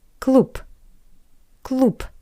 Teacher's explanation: Next example, the word cloop which means club. The voiced consonant b change to p